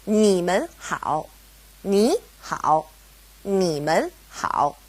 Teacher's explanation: It's a toneless tone, or a neutral tone, mun. Now, because we have mun separating ni and hao, they both go back to being third tone